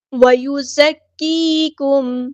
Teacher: وَيُزَكِّيكُمْ، زا کو سختی سے ادا کرنا ہے، زا باریک لائٹ لیٹر ہے لیکن سختی سے ادا ہوگا۔ کاف باریک لائٹ لیٹر ہے، یا مد آیا تو مد اصلی کریں گے۔ میم ساکن کی آواز کو ہم یہاں پہ ظاہر کریں گے، ٹائم نہیں لگانا، اظہار شفوی ہو رہا ہے۔